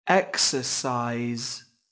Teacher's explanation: có 3 âm tiết trọng âm rơi vào âm Tiết đầu tiên